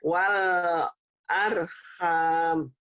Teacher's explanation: Jadi wal jangan ada e-nya.